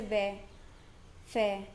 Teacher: दंतोष्ठ्य मतलब निचले होठ व ऊपरी दांत से